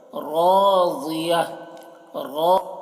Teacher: रॉ को पूर पढ़ रहे हैं और ज़ाद को पूर पढ़ रहे हैं